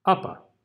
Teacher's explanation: our first vowel is the stressed vowel that's going to be the uh and then the second one is just going to be the schwa